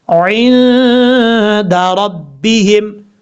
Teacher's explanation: آئین کو کلیئر کرنا ہے، حمزہ کی آواز نہیں آنی چاہیے. آئین کے بعد جو نون ہے یہ نون ساکن ہے. · نون ساکن کے بعد حروف اخفا میں سے دال آ رہا ہے، اس لیے یہاں پہ نون ساکن کا اخفا ہوگا، ایک الف کی مقدار غنہ کر کے پڑھا جائے گا